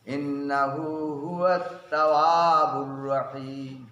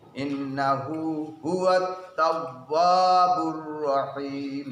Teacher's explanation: ওয়াওকে ঠোঁটের সঙ্গে চাপ দিয়ে আদায় করতে হবে